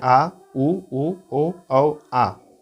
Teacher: जिन स्वरों के उच्चारण में जीभ का पश्च भाग, पीछे का भाग काम करता है उसे पश्च स्वर कहते हैं